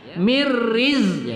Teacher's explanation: zai kita disiskan agak kuat pada sifat as-sufir